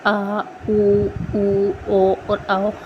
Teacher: पश्च स्वर है जो कि मतलब पीछे से हमारे जीभ के पिछले भाग से उच्चारित होते हैं। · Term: पश्चम स्वर